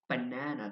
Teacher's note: Banana the stress is on the second syllable.